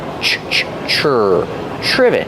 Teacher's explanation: It starts with tr so we make the ch sound like chicken together with the r.